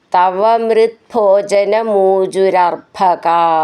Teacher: പറയണം ചേർത്ത് ചൊല്ലാുള്ളതാണ്ത് മൃത്ഭോജനം പൂജുരർഭക അർഭക എന്നുള്ള അക്ഷരം നന്നായിട്ട് ഊന്നി പറയണം ക എന്ന് നീട്ടിയിട്ട് വിസർഗ്ഗത്തോടുകൂടെ അങ്ങനെ നിർത്തണം